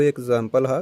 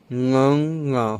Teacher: ਗਲੇ 'ਚੋਂ ਆਵਾਜ਼ ਕੱਢਣੀ ਹੈ, ਨੱਕ ਥਣੀ ਬਾਹਰ ਜਾਣੀ ਹੈ।